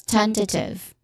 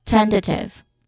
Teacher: The first syllable is the stressed syllable here, ten.